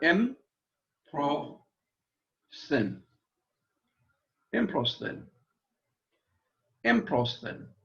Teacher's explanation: Notice the accents on the first syllable, but each syllable is pronounced separately.